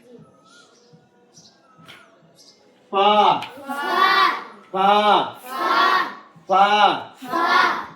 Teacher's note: फ में जब हम बोलेंगे फ दोनों होठ मिलेगा और अंदर से हवा आएगी